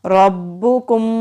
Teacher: रा के ऊपर ज़बर है, रा को मोटा पढ़ेंगे और बा के साथ मिलाएंगे। बा के ऊपर तशदीद है, मजबूती से अदा करेंगे।